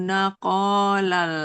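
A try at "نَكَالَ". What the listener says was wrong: Nakalan. Naka, bukan nako. Nakalal.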